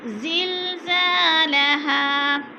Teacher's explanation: الف مدہ کو ایک الف کے برابر، ایک الف دو حرکات کے برابر کھینچ کر پڑھنا ہے